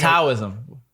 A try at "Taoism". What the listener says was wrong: It's actually supposed to say with a D. Taoism. It's spelled with a T.